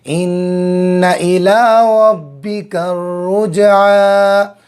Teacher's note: را پر زبر ہے، را کو پر کریں گے